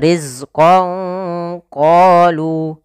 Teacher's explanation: samarkanlah suara nunnya kepada huruf q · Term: Ikhfa